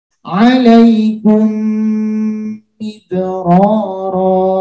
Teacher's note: maka cara membacanya memasukkan ke huruf mim berikutnya dengan disertai dengung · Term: idgham mimi